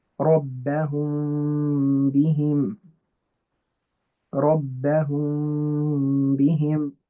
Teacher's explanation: you're still putting in the ghunnah from the nose, but you're not pressing the lips together in a strong way to make that strong meme sound. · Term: ikhfa shafawi